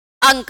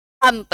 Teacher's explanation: मुंह और नाक दोनों से हवा बाहर निकलेगी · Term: अनुनासिक